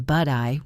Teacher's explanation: But I became Bud-I with a flap T.